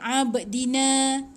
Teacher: Ada ba tu ada pantulan qalqalah sikit. Abdina, na panjang 2 harakat.